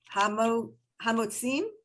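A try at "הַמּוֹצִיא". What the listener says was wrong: Hamo, there's no M at the end. Hamo,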